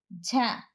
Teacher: ఝ నాదం మహాప్రాణం తాలవ్యం స్పర్శోష్మం